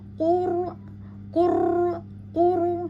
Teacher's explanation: ro yang sukun maka r-nya di sini tebal